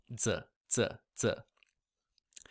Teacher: you're placing the tip of your tongue towards the back of your upper teeth and that hard palate